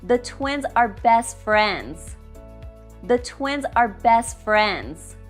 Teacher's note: We drop the T in best.